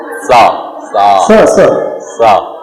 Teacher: इसे दती सा कहा जाता है क्योंकि इसके उच्चारण में दांत का प्रयोग होता है। हमारी जीभ दांतों में टच होगी तब इसका सही उच्चारण निकलेगा। · हमारी जीभ जो है नीचे के दांत की पंक्ति में टच होती है। · हमारी जीभ दांतों में टच होगी तब इसका सही उच्चारण निकलेगा। अदरवाइज सही उच्चारण निकल ही नहीं सकता। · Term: सड़क का स